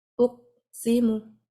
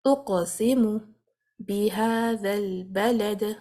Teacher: qaf is blocking the free flow of the sound. I need to bounce it. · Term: bouncing of the qaf